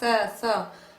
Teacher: ये जो सकार है ये दंत सकार है, दांत से बोला जाता है